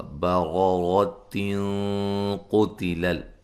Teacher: نون تنوین کا اخفا ہوگا موٹا ، قاف کو موٹا ادا کریں گے قتل الانسان ما اکفرہ،